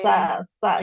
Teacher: Nah, kalau sa ujung lidah ke ujung gigi seri yang atas.